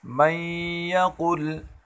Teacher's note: ہم اس نون ساکن کو اس یا میں داخل کریں گے اور تشدید کے ساتھ غنہ کریں گے